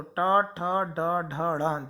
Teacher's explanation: टा, ठा, डा, ढा, णा, ये कहलाते हैं मूर्धन्य वर्ण, मूर्धा को स्पर्श करते हुए वायु निकलेगी, तो टा, ठा, डा, ढा, णा, जब आप इन वर्णों को बोलेंगे तो आपकी जो जीभ है वह ऊपर की ओर टच होगी, तो ये कहलाते हैं मूर्धन्य वर्ण।